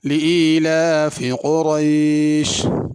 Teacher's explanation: لإیلاف قریش، قریش میں بڑا قاف ہے، چھوٹا قاف نہیں ہے، اس کو لإیلاف قریش نہیں پڑھنا، قریش قاف کو پر کر کے پڑھنا، موٹا کر کے پڑھنا